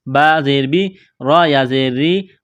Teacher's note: را کے نیچے زیر ہے، را کو باریک کرنا ہے